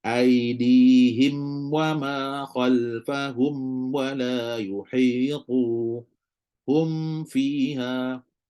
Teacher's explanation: dengan wau especially lah Mesti kena berikan bainiah pada mim tu berikan bunyi tawasud bunyi dengung pada mim tu dengan secukupnya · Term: izhar